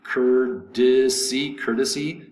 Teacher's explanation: The T is pronounced like a D.